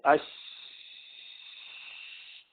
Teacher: تو اب رخاوہ جیسا عرض کیا، اس میں دیکھیے اوپر آپ کچھ نہ کچھ آواز بھی چلتی رہتی ہے اور کچھ نہ کچھ سانس بھی چلتی رہتی ہے، اس لیے اس میں حمز بھی ہے اور نرمی بھی ہے.